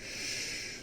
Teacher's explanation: When you rush your air through your teeth, you get a shh, a hissing sound.